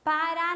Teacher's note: na última sílaba tônica é mais forte